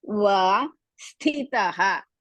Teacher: Sthi you have to stress. Mahaprana.